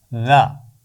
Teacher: اگلے حرف کو دیکھیے، یہ ہے ذال، تو اس کی آواز ہے ذا، نرم حرف ہے بغیر سی ٹی والا